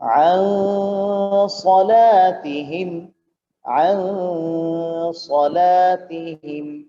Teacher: আমরা এই 15টি অক্ষরের মধ্যে একটি অক্ষর সাদ পেলাম যেটা ইখফার অক্ষর, এই জন্য এখানে নুন সাকিনকে অস্পষ্ট করে নাকের ভিতরে লুকিয়ে গুণনা করে এভাবে বলতে হবে